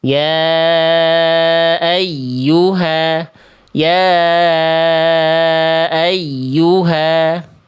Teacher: Ditekan, dinaber tapi tidak berlebihan. Tidak membuat suara huruf ya tasydidnya terputus.